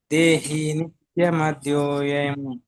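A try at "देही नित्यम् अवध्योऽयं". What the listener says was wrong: ದೇಹಿ ನಿತ್ಯಂ ಅವದ್ಯೋಯಂ ಅ ಹಾಕಬೇಕಲ್ಲ ಅಲ್ಲಿ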